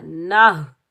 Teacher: نون کے اوپر زبر، نون کو ہم ہا ساکن کے ساتھ ملائیں گے، اس ہا کو ہم سینے سے ادا کریں گے اور بغیر کھینچے پڑھیں گے